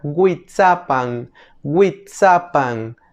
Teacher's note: en fonética se le conoce como aproximante labio velar Sonora la W en nahuat sonaría como que si fuera una hu